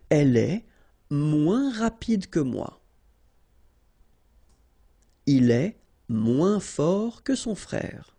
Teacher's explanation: Remember, we don't pronounce the final S.